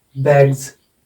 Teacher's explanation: गे क्या है, voiced sound है, तो इसलिए इसमें बैग्स, जे की ध्वनि आ जाएगी।